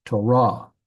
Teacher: The emphasis is on the last syllable.